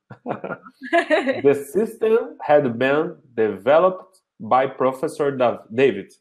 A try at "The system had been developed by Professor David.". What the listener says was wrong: Yes. Good.